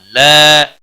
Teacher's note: الف مدہ ہے 1 الف کے برابر کھینچ کر پڑھیں گے